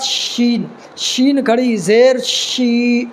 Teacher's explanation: کے نکالنا ہے، اور اس میں شین بڑی شین ہے، یعنی زبان کا جو بیچ والا حصہ ہے اس بیچ والے حصے کو تالو کے بیچ والے یعنی درمیان والے حصے میں لگانا ہے